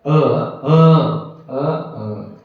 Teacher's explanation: म्हणजे एकच अ अ अ अ तीन प्रकारे म्हणता येतं ते उदात्त अनुदात्त स्वरित म्हणून